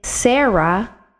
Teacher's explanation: the reish is a guttural sound it's made at the back of your throat · the resh is a guttural sound. It's made at the back of your throat. So when I say Sarah, it's going to sound like sera, because I'm actually making the resh sound from the back of my throat.